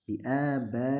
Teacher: Mad muttasil ini di dalam riwayat Hafiz an Asim dari Thariq Syatibiyah, panjangnya yang muqaddam atau diutamakan adalah 4 harokat dan juga boleh 5 harokat. Jadi panjangnya 4 harokat atau 5 harokat. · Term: mad wajib muttasil